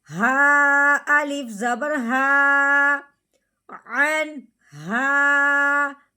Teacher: نون ساکن کو بغیر غننے کے اظہار کے ساتھ پڑھیں گے ہا آنے کی وجہ سے